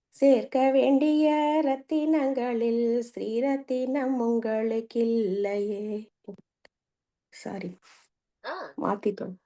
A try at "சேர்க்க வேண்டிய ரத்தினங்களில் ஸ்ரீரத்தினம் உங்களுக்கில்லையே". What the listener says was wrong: Correct தான்.